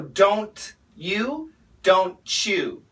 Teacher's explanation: D plus Y in America equals a J sound. T plus Y equals CH.